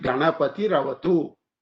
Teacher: Ganapatihi avatu, this Visarga becomes R, and that R with the A becomes Ra. Therefore, you call it Ganapati Ravatu.